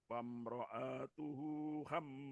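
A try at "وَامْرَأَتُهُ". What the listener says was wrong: Wamra'atuhu. Ha-nya tidak dipanjangkan.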